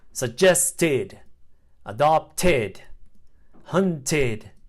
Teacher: sound final e d is pronounced after T and D sounds the sound ID adds a whole syllable to a word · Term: ID sound